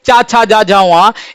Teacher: चा वर्ग के जो व्यंजन वर्ण हैं उनका उच्चारण तालु से होता है, इन्हें तालव्य व्यंजन कहा जाता है।